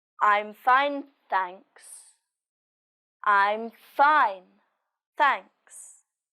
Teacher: the stress is on fine and there's a falling intonation at the end of the sentence